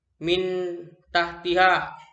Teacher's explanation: Cara membacanya harus samar dan mendengung seakan akan bertemu dengan huruf.